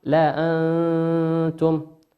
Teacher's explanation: لا أنتم نون ساكنة في كلمة لأنتم أتى بعدها حرف التاء، والتاء من حروف الإخفاء